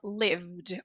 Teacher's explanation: E aqui, na hora de passar pro ED, na hora de pronunciar o ED, a gente vai pular do som V pro D